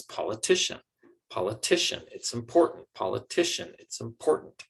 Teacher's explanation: only one of those syllables gets the most stress and that's because the word important is stressed on the second syllable and the word it's is not a very important word and